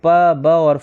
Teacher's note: तो option C जिसमें प ब और फ है यह ओष्ठ वर्ण है क्योंकि दोनों ओठों की सहायता से उच्चारित होने के कारण प वर्ग के जो वर्ण है वो ओष्ठ कहलाते हैं।